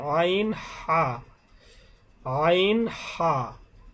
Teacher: দুই নাম্বার মাখরাজ হলকের মধ্যখান অর্থাৎ কন্ঠনালীর মধ্যখান হইতে